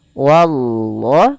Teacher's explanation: jangan menebalkan WAnya tapi dia tipis